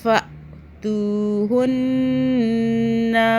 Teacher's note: ان پہ غنہ ہوتا ہے لازمی 2 سیکنڈ کا، یہ نون مشدد ہے